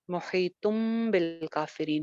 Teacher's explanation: जब तनवीन के बाद या नून साकिन के बाद बा आती है तो फिर नून की आवाज मीम में बदल जाती है, इसीलिए मुहीतुम बिल काफिरीन हो जाएगा।